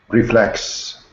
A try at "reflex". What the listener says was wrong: Perfect.